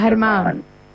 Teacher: So the G sound is pronounced like a H, and then you put an accent at the end. So it's pronounced Herman.